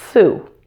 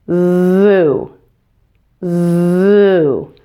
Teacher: we're going to add voicing to that S at the beginning of Sue to make the word zoo.